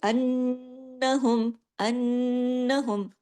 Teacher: नून की आवाज नाक से होकर निकलती है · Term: गुना